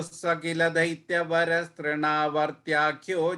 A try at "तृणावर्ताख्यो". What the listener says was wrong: That fourth line beginning, Trina, I heard it as Tyakyo. I heard a ya sound there. Is Trinavartakyo. Thakyo.